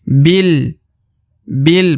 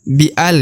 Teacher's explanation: i jadi dibaca bi di depan huruf Bi terdapat Alif ya Alif ini tidak dibaca ya karena huruf Bi langsung masuk ke huruf lam